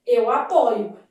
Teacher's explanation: No verbo apoiar, a forma de primeira pessoa do presente do indicativo apresenta a letra O aberta